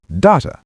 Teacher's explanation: data, the first syllable stressed